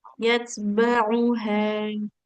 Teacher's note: Hati-hati ainnya jangan seperti hamzah.